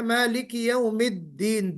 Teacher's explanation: दाल को प्रोनाउंस करते वक्त हमारी आवाज बुलंद हो जानी चाहिए और आवाज में शिद्दत पैदा होनी चाहिए।